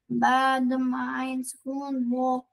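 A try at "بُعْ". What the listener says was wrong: Make it deeper, I said. And make the ayn deeper.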